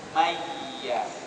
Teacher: Idgham ma'al gunnah. Kita masukkan terus nun mati itu ke dalam huruf iya.